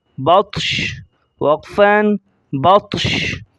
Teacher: یہ طا حروف قلقلہ میں سے ہے، میں نے پیچھے بتایا تھے کہ جہاں پر حروف قلقلہ آ جائیں گے وہاں موٹے پڑھے جائیں گے، وہ حروف جو موٹے کہلاتے ہیں وہ حروف قلقلہ کہلاتے ہیں۔ تو بطش، یہ شین کے زبر کو ظاہر نہیں کریں گے